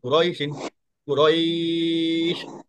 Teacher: তো এটা যদি আমরা লিনের হরফ হিসাবে পড়ি, তাহলে হবে কুরাইহিন, কারণ এটা খুব দ্রুত পড়তে হয়। যে লিনের হরফ থাকলে এখানে কোনো মাদ হবে না, এটা দ্রুত পড়তে হবে